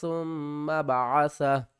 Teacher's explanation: وقف کی صورت میں اوپر والی پیش ختم ہو جائے گی اور ہا ساکن ہو جائے گا